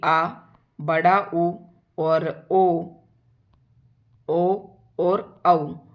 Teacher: पश्च का मतलब होता है पिछला, यानी कि जिन स्वरों के उच्चारण में जीभ का पिछला भाग उठता है उन्हें पश्च स्वर कहते हैं।